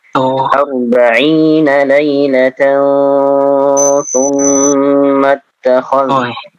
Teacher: 40 lailatan, kalau mau diwasal maka dia ditahan ya, jadinya ikhfa